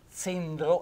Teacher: con la Z dura, zendro e con la E chiusa, è la cenere